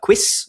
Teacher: what you've got here is the qu sound, as I said, this labio-velar sound